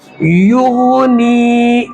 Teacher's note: غین نکالیں گے گلے کے بالکل اوپر کے حصے، جہاں سے خا نکالتے ہیں وہاں سے غین نکالے گا